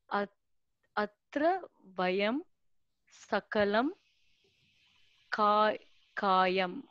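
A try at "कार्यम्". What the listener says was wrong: Karyam. Repa is there and dot is there. So, karyam, not kayam. Karyam.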